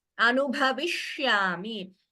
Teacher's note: So this sh, the tongue, it curls up, and it is a murdhanya sha.